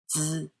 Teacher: The first sound is spelled Z-I. It sounds like it has a quiet D before it too, but you don't curl your tongue when pronouncing it.